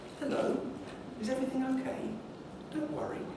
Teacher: The correct way to talk to a lost child is to use a relatively high key and a rising tone.